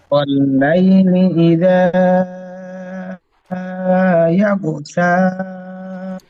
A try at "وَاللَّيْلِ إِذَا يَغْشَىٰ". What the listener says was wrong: ইয়াগশা, শিন, শেষে শিন অক্ষরটি সিনের মতো উচ্চারণ হচ্ছে একটু।